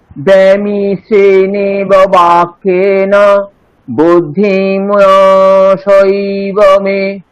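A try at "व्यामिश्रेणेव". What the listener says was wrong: হ্যাঁ, এখানে ব্যামিশ্রে এরকম না বলে ব্যায়া, ইয়া ব্যায়া, আর মোহয়সি বামে, মো তারপর হয়সি, আপনি হসাই এরকম কিছু বললেন। আমি আবার বলছি, ব্যামিশ্রেণেব বাক্যেন বুদ্ধিম মোহয়সি বামে।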